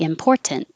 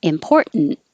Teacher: You can say this with a T and very clearly important, or no T, which is more common, important, and have the n noise.